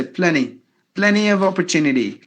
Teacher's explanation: whatever you have this NT combination the Americans will usually drop the T